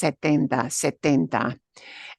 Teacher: And remember, too, that in Spanish, the T from 70, right, that extra T that comes from siete, the T's are not explosive T's. So if you think the T's sound kind of mushy or soft, they are. T's in Spanish are not voiced.